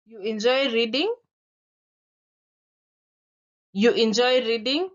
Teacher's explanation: as I say it my voice is rising because I am surprised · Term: Rising intonation, rising intonation